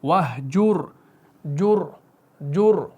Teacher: دیکھیں اگر آپ کتنا بھی کریں نا کہ اس را کو آپ باریک نہیں پڑھ سکتے، آپ کوشش کر کے دیکھیں وَاهْجُرْ جر منہ بھر کے، کیونکہ را ساکن سے پہلے مضموم ہے، تو اس وجہ سے یہاں پر را کو آپ نے موٹا کر کے پڑھنا ہے